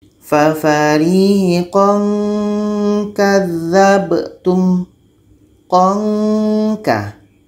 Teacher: Ketika baca tanwin, kita sudah merasakan huruf K. Alhasil nanti akan menghasilkan bunyi eng, bunyi ng, atau bunyi ng. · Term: ikhfa hakiki